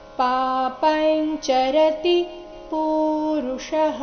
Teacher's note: ಅನುಸ್ವಾರದ ಉಚ್ಚಾರಣೆ ಇಲ್ಲಿ ಚ ವರ್ಗದ ಅನುನಾಸಿಕ ರೀತಿ ಆಗಿದೆ